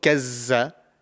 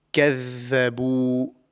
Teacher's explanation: But in this case, the zaal, it's a similar method, similar way to pronounce this letter, but the vocal cords are being used and there's more vibration to this. And the tongue is pressed against the edge of the upper front teeth. So same way like the tha, but we are using the vocal cords over here.